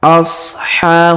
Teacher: huruf ha kita panjangkan dua harakat karena di atasnya terdapat Alif kecil